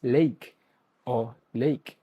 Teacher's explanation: While a broad transcription predicts a standard I, his Australian accent shifts it into a wider, more open sound captured narrowly as lake or lake.